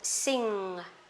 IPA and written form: sɪŋ (sing)